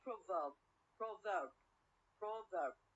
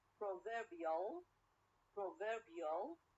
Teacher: add ill okay ill proverbial proverbial i change the stress or the stress is changed from the first syllable to the second syllable